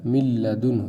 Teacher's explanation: نون نہیں پڑھنا ہے، آپ سیدھا لام میں ملانا ہے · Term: ادغام بلا غنہ